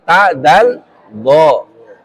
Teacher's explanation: Di ujung lidah berada di belakang gigi atas.